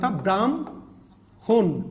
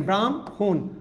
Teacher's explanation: হটা পরে চলে গেছে মটা আগে চলেছে